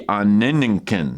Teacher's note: You got the nasalized kind of gamma thing, some interesting, almost reduplicative lengthening there.